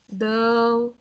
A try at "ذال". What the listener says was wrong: ذا ذا ذا ذال like when I say الذين الذي like that ذال I hear it like a دال Not dal.